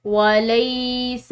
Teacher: لام کے بعد یا ساکن ہے تو اس کو ہم نے کھینچ کر پڑھنا ہے